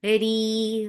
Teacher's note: ra is light. Whenever ra is with kasra, it is light and make it 2 counts long